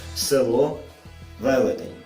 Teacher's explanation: голосний и в ненаголошених позиціях має вимову наближену до е